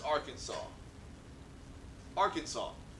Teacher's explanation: three syllables with the accent on the first and last syllable a silent s at the end